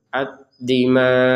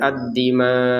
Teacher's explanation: huruf hamzahnya tetap kita terbacakan dengan sukun